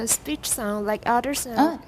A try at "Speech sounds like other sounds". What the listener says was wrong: Don't go too fast. You missed an S there.